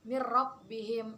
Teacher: Kemudian contoh yang berikutnya mirrabbihim, itu nun sukun bertemu dengan ro. Jadi membacanya itu masuk dengan tanpa mendengung. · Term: idgham bilaguna